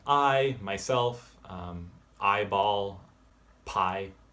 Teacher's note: This is an ah into an e sound. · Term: AY